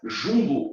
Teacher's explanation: o U e o M faz um som nasalizado